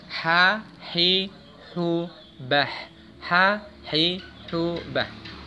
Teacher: Makhrajnya sama, yaitu di tenggorokan bagian tengah. Ha ini hampir sama pengucapannya dengan ain, tapi agak dilonggarkan sedikit tenggorokan bagian tengahnya. Ya, agak longgar. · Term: huruf ha